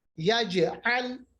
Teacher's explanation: کلکلا ہوگا, آواز واپس آئے گی